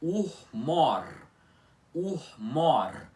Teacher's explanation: Urmor com o aspirado iátono sem ser forte e mais fraco no começo da palavra, enquanto esse ó do mor é pronunciado com mais força sendo a vogal tônica